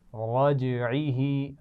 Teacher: إنه على رجعه, على آسان لفظ ہے, آپ کئی دفعہ پڑھ چکے ہیں. رجعه, را موٹا ہے اور جیم پر قلقلہ ہو رہا ہے